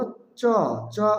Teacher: অল্পপ্রাণ বর্ণ বাতাসের চাপ কম থাকবে